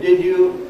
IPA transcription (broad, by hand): ˋdɪd ju